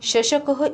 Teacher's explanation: जेव्हा माझे उच्चारण होते तेव्हा जिभेचा मध्य तालूला किंचित स्पर्श करतो. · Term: तालव्य